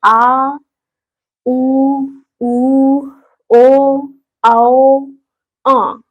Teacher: इनका उच्चारण जिह्वा के पीछे वाले भाग से होता है। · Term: पश्च स्वर